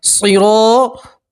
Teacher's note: را کو پور پڑھیں گے، اور الف پور حرف کے ساتھ ہے تو الف مدہ کو بھی آپ پور پڑھیں گے، موٹا پڑھیں گے